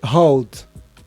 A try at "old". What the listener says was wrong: Com O, começa mesmo com O, não com